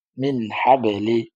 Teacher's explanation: এই গুন্নাটা হবে না মিন স্পষ্ট হবে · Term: স্পষ্ট করার হরফ